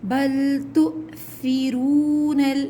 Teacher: حمزہ کے اوپر جب سکون آ جائے تو جھٹکا دیتے ہیں، بل تؤثرون، یہاں واو ساکن سے پہلے پیش ہے، واو مدہ ہے، 2 کاؤنٹس کھینچیں گے۔